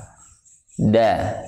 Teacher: Da, coba antum huruf da, ujung lidah kan? Pangkal lidahnya nggak naik.